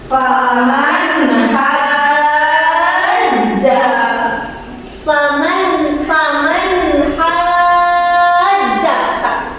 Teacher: nun mati bertemu dengan huruf ha kecil ini dibacanya dengan jelas. Dan disebut namanya izhar.